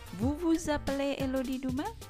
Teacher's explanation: Di sini saya gabungkan antara kata kerja supply digunakan dengan bertanya menaikkan intonasi di belakang